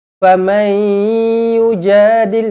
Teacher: nun kosong bertemu dengan ya idgham ma'al gunnah dengan 2 harakat